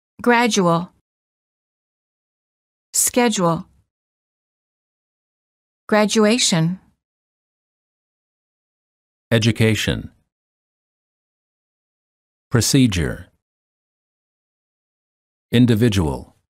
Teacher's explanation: D plus u is usually pronounced as J as in the word joke